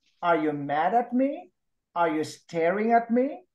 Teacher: those are yes no qu yes no questions and you use the rising intonation